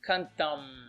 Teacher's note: I don't actually fully open my mouth. I start to make this M sound, but I don't actually open the mouth.